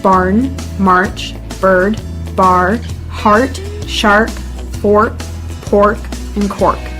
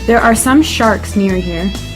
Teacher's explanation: one of the main characteristics of the accent is the r sound this is often heavily pronounced much more so than british english